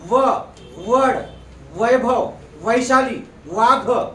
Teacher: खालचे ओठ वरच्या दातांना लावूनच यांची उच्चारण होते, त्याला व म्हणायचं लक्षात.